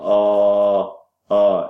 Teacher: is a low back tense unrounded vowel